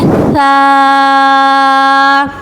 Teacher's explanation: सा का मखरज है जब ज़ुबान की नोक सामने वाले दो दांतों की नोक से लगेगी तो सा अदा होगा